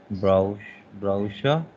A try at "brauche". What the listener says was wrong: Brauche, not sure, k. Mostly sure is when there is sch, sure. Similarly, brauche, but Mensch, M-E-N-S-C-H.